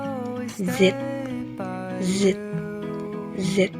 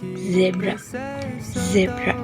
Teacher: ujung lidah dekat gusi atas dan pita suara bergetar